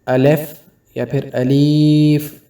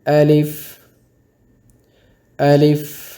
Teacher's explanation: الف کو جلدی سے پڑھیں گے اور مجہول نہیں پڑھیں گے